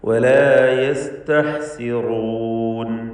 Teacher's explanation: ഹ വ്യക്തമായി തൊണ്ടയുടെ മധ്യത്തിൽ നിന്ന് ഉച്ചരിക്കുക, അതിൻ്റെ മഖ്റജ് തൊണ്ടയുടെ മധ്യമാണ്.